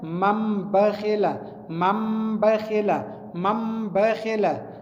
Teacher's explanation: دغه نون چې دی دا په میم بدلیږي